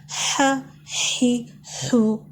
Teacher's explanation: گلے کے درمیان والے حصے سے نکالیں گے، خالی سی آواز ہوگی